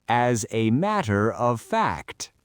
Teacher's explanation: We push the S from as onto the a. The a becomes a schwa · fact is our final content word, so we hit it hard.